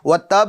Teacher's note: با کو تشدید کی حالت میں باقی رکھیں گے, مگر اس پر جو حرکت ہے نا زبر, اس کو ظاہر نہیں کریں گے